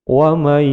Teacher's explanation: nun sukun dimasukkan pada ya idgham bigunah, panjang 2 ketukan